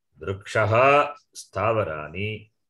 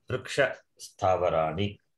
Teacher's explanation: In that case, Visarga is optionally dropped. Either Visarga can remain or Visarga can be optionally dropped.